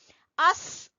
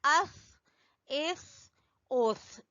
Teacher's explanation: हमजा जबर सा अस, हमजा जेर सा इस, हमजा पेश सा उस। आपने जबान की नोक को सामने वाले दो दांतों के सिरे से लगाना है तो फिर सा अदा होगा, इसमें सीटी की आवाज नहीं आनी चाहिए।